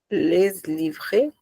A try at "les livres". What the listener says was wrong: Só que você não pronuncia o S. Les livres. Você escreve les livres, tá?